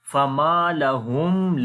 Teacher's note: After the mim sakin, the next is lam. We make the clear sound of mim here.